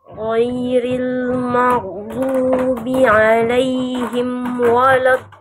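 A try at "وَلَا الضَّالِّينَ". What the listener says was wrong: Jangan wolod. Wolod. Waw huruf tipis, huruf tebal, Bunda. Huruf waw itu huruf tipis, huruf tebal. Tipis.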